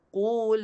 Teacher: Dia kena jalankan daripada rumah pangkal lidah qu. Lam dekat hujung tepi lidah l.